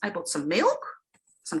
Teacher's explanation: When you make lists, you want to show that your utterance is not over yet. And that's why the intonation goes up at the end of each beat.